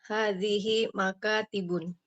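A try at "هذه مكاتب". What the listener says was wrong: Ibu perhatikan itu bukan makatibun tidak bertanwin ya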